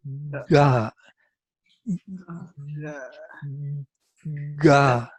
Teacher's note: The activation of vocal cords takes place before the touch.